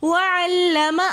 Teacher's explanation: وعلم میں لام مشدد ہے تو اس لیے ہم عین کو لام کے ساتھ ملا کر پڑھ رہے